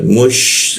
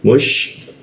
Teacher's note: Sya itu posisinya di tengah lidah dia. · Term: huruf sya